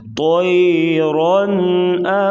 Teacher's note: را کے اوپر دو زبر ہو یا زبر ہو تو را کو پر پڑھا جاتا ہے موٹا